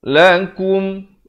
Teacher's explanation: Kum bukan kum, jangan baca lakum, tapi lakum. Kaf baris dhamma bunyi ku, bukannya bunyi ko. Jadi bertemu min jadi kum.